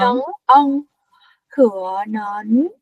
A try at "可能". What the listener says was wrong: Không phải nấn. Không phải nấn. Chúng ta đọc cuối bằng chữ G mà. Nớn.